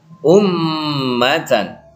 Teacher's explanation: Ya, gunnah atau mendengung. Ini didengungkan, mim tasydid, ya. Mim bertasydid.